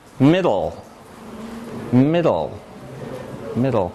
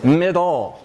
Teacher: you make the closure at the alveolar ridge with your tongue for duh, and then you lower the sides, which is what gives you ol.